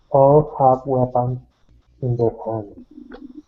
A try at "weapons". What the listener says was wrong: Okay, now the O on weapons, okay, this is actually going to be a short I sound. Weapons, weapons.